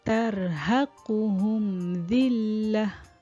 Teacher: Dia tidak ada dengung. Kita cuma menjelaskan kalimah huruf mim yang bertanda mati tersebut. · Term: izhar syafawi